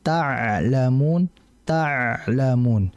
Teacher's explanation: ain mati itu dalam kondisi mengalir tapi enggak lama